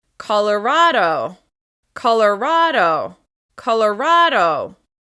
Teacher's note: Once again, the stress is on the third syllable.